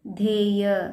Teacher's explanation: ಮಹಾಪ್ರಾಣ ಧ ಮತ್ತು ಯ ಒತ್ತಕ್ಷರ ದೀರ್ಘ ಇದೆ ದೀರ್ಘಾಕಾರವಾಗಿ ಪ್ರೊನೌನ್ಸ್ ಮಾಡಬೇಕು